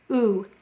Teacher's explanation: Notice U is forward and round. U. Broad sounds are round and forward sounds as we say them.